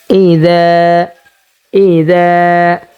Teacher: আমরা জাল উচ্চারণ করব জিহ্বার আগা উপরের দুই দাঁতের আগার সাথে লাগিয়ে।